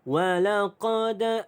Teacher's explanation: Baik, di sini ada hukum qalqalah, iaitu huruf dal yang ada tanda mati asal, maka dia adalah qalqalah sughra. Okey, detakan dia kecil. Walaqad. Okey, qalqalah sughra.